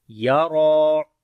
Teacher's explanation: را کو بھی موٹا پڑھیں گے، اس کے اوپر کھڑی زبر اور لمبا بھی کریں گے